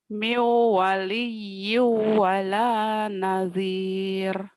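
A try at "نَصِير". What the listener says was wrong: Nasir, Nazir. Ah, Sod. Nasir ya, Nasir. Nasir. Nasir, Nasir.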